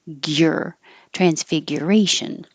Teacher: And one of the more difficult things is the gyr. So it looks like GU, but it's really your tongue starts in a high Y position, gyr, transfiguration.